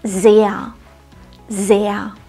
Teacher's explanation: das Wort sehr enthält einen langen Vokal und das R am Ende wird nicht ausgesprochen